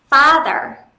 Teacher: nhá father father trong âm dơ và âm Tiết đầu tiên thế nên âm Tiết đầu tiên sẽ đọc nhớn giọng lên